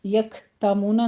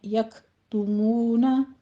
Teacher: تا کے اوپر ضمہ ہے، ہونٹ گول کیجیے